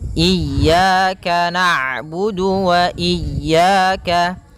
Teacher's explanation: ain itu punya sifat namanya bainiyah, yaitu bacaan di antara syiddah dan rokhawah. Kalau syiddah suaranya tertahan, kalau rokhawah suaranya mengalir, maka di antara keduanya.